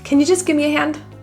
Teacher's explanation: Give me reduces and kind of contracts to a gimme.